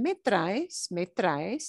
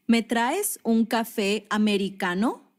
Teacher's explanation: Me traes, and your inflection should go up. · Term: rising intonation